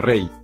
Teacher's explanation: la y al final de la sílaba suena como vocal la consideraremos como vocal por lo tanto si forma diptongo en